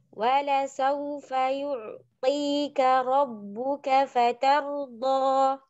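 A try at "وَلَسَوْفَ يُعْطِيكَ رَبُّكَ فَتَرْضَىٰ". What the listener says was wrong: Hati-hati di ainnya. Terlalu dalam ngambilnya ain. Jadi kayak berhenti. Kayak sakta. Wala saufa yu'ti. Nah, seakan-akan kayak sakta. Berhenti gitu. Baru lanjut. Ngalir aja. Ya, makanya ain itu memiliki sifat tawassut.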